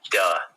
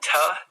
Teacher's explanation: Duh is just the voice version of ta.